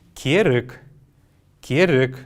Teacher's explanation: После буквы «р» есть неясный звук.